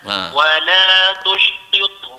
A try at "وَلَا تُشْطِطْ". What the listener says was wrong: Jadi tushtit dia tipis. To yang pertama. Tushti. Tushti. Tushti. Ada sifat khopak dia tu pula nama dia.